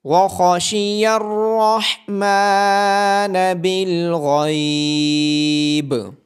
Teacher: خا کو، را کو اور غین کو موٹی آواز کے ساتھ پڑھا جائے گا